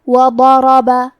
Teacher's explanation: حرف الضاد کی ادائیگی زبان کے کروٹ اور اوپر کے داڑھوں کی جڑ سے ہے. ضاد حروف تفخیم میں سے ہے تو ہم یہ حرف کو بھاری آواز میں پڑھیں گے · کلمت وضرب میں واو پہ، ضاد پہ، را پہ اور با پہ چاروں پہ زبر ہے تو ہم یہ چاروں زبر کو برابر سے ادا کریں گے